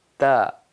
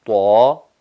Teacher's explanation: جب ہم طا ادا کرتے ہیں تو پوری زبان جو ہے یا زبان کی جڑ اوپر اٹھ جاتی ہے، تالو کی طرف اوپر اٹھ جاتی ہے اور آواز جو ہے پورے منہ میں یا جوف دہن میں بھر جاتی ہے، جیسے کہ طا طا۔ تا بالکل سمپل اور باریک آواز ہے، لیکن طا جو ہے ہم زبان کی جڑ کو اوپر فضائے دہن میں اٹھاتے ہیں جس سے آواز منہ میں بھر جاتی ہے